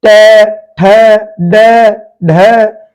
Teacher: ट वर्ग का उच्चारण स्थान है हमारी मूर्धा।